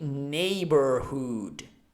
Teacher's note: the H sound is aspirated, and the double O is like ooh, like in moon